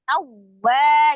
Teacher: Jadi alif lam jalalahnya dibaca dengan tebal, lamnya ha tawwa, ada waw tasdid dibacanya dengan naber ya, naber ditekan ya. Tawwa gitu, tapi tidak ditahan, hanya dinaber saja.